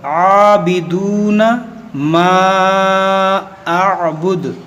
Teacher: یہاں پر بھی دیکھیں عین ہے, تو یہاں پر بھی عابدون پڑھتے ہیں لوگ, تو یہاں پر پڑھنا ہے عابدون, عین پہ کھڑا زبر ہے, تو کھینچیں گے تھوڑا سا 1 الف کے برابر